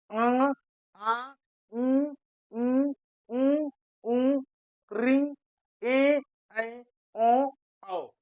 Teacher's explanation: इनके उच्चारण में हवा हमारे मुख के साथ-साथ नाक से भी निकलेगी